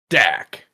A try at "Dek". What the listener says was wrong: You're close, but replace the A with an E. Deck. D-E-K.